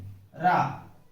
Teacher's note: मुख से हवा जिह्वा से टकराकर नीचे लुढ़कती है। साथ ही जीवा में कंपन होता है। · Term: लुंठित या प्रकंपित